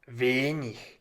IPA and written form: ˈvɛnɪç (wenig)